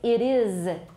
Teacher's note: But remember to fix that, because is voiced.So, normally we should voice the sound, the S in is